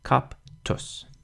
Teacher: So we split the two consonants down the middle. The T really wants to begin the second syllable, which means that the P has to end the first syllable.